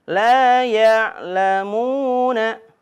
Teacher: ketika menemukan waw sukun sebelumnya berharokat dhammah, maka ayun suaranya, cara bacanya dibaca panjang, 2 harokat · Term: mad tabi'i